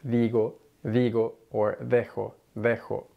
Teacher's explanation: Your tongue is almost kind of between your teeth when you say those sounds, digo or dejo. Sometimes at the beginning of words, it's a little bit more forceful or noticeable of a D than it is in the middle of a word. In particular, when a D follows a vowel or has two vowels on either side of it.